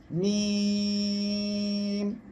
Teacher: বাতাস বন্ধ থাকবে আপনি মিম অক্ষরটি যখন উচ্চারণ করবেন তখন আপনার মিম অক্ষর উচ্চারণের সময় বাতাস বাইরে আসবে না বন্ধ থাকবে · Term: জাহার